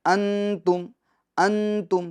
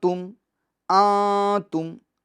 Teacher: نون ساکن کی آواز کو ناک میں چھپانا ہے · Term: اخفا